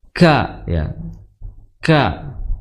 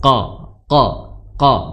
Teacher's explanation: kaf kan memiliki sifat hames atau mengalirnya nafas